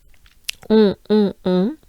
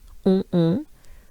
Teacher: Pretty closed up and nasal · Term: on French sound